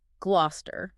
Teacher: the stress falls heavily on that first glow syllable. Everything else is secondary, and it just leads to the collapse of oo and the compression of cester into cester.